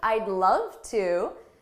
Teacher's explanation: notice my tone of voice is happier, it's upbeat